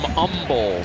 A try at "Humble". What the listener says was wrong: No hate. No H. They don't hate.